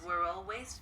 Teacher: chữ always này luôn luôn chúng ta phải có cái final sound Z này ha